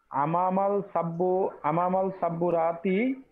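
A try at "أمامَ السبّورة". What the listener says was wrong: জি, এখানে সিন যেহেতু ওই যে ইয়া শব্দের মধ্যে পড়ে, হরফে শামসের মধ্যে, তাই আমামাস সাব্বুরাতি।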